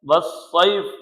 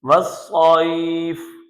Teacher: یہ دیکھ لیں، یا ساکن سے پہلے زبر ہے تو یہ یا مدہ ہے، والصیف نہیں پڑھیں گے، والصیف، کیونکہ ہم فا پہ وقف کر رہے ہیں تو یہاں پر ہم یا لین کو درازی کے ساتھ پڑھیں گے، کھینچ کر پڑھیں گے۔